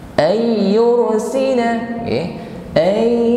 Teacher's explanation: ra sukun yang sebelumnya ada harokat dhammah, maka ra sukun kita baca dengan bergetar, namun getarannya tebal. Bukan yur. Ayyursina alaikum hasiba, hasli. · nun sukun kembali bertemu ya, maka kita idghamkan